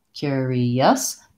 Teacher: the second two syllables are shorter and reduced I would say the challenging thing about this word is that it has this hidden yeah sound in it also how to make the vowel sound with the Cur so · we have first syllable stress so the first syllable is long and then curious the second two syllables are shorter and reduced